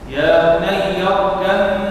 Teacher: يا بني اركب هنا إدغام متجانسين صغير مع الغنة. اركب معنا الباء في الميم.